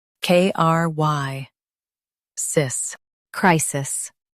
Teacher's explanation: Stress the cry and keep sis light.